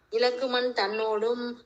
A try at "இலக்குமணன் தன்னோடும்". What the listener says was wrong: இலக்குமணன் எழுத்தெல்லாம் விடக்கூடாது, அதுக்குதான் சந்தை பார்த்து செய்வீங்க. இலக்குமணன் தன்னோடும். இலக்குமணன் தன்னோடும் அல்ல தன்னோடும். குறில் நெடில் எல்லாம் பார்த்துக்கணும்.